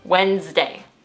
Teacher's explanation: I really don't know why the D is in that word, but we just forget about it when we pronounce it Wednesday.